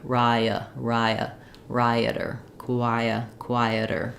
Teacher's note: So if you're trying to do rider and rioter, just notice that rioter is going to have the raya, it's going to have that gliding, and you might even hear a little bit of a y sound, a little bit of a glide as you move from the I shape to the clear, reduced shape